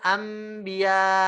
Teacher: suara lembut yang keluar lewat khaisyum ini lembut jadinya dia nggak kasar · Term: ghunnah